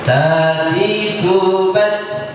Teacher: Pengucapannya ujung lidah tempel ke gusi atas.